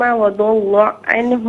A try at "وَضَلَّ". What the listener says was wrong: وَضَلَّ میں لام کو پر نہ پڑھیں، وَضَلَّ میں لام کو پر نہ پڑھیں، وَضَلَّ نہیں، وَضَلَّ۔